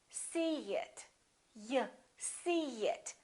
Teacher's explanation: here's a vowel e and here's another vowel it in this case we put a little Y a little yeah sound so we don't say see it listen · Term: linking vowel to vowel